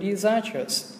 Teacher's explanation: mình có cái từ disastrous thì trọng âm nó sẽ vào âm zas